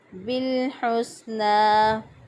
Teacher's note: لام جو حروف قلقلہ میں سے نہیں ہے تو پھر یہاں پہ قلقلہ نہیں ہوگا۔ درست ادائیگی ہے بالحسنى۔